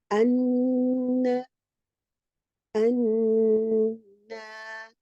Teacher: the tip of the tongue is touching the gums of the upper central incisors, and the sound is let to flow through your nose. Okay, and that's how you get the ghunna.